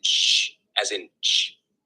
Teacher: Affricates are a combination of a stop followed by a fricative. The sound starts with a complete closure, like a stop, but then is released into a narrow constriction, like a fricative